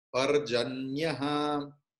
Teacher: So Visarga's chant pronunciation is ha, and it is akara like parjanyaha.